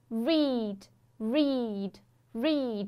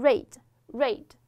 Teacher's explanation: 一定要记住它这个长元音▁e▁只有一个音，所以说一定要保持住。